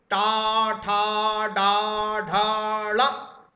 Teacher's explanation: जीभ एकदम पलट जाएगी झटके से दोस्तों। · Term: मूर्धन्य